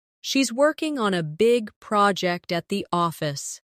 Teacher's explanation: Stress, working, big, project, and office.